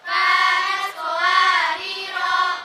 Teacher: Jika waqaf di ro yang awal ro-nya tetap dibaca panjang